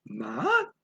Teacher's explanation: tone two is like starts in the middle of your voice range and goes up the top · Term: rising tone